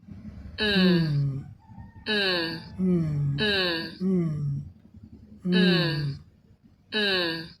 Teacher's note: Your lip are together और दोनों होठ जो है जुड़ जाते हैं बंद हो जाते हैं एंड देयर इज वॉइसिंग और इसके उच्चारण में हमारे गले में कंपन होती है।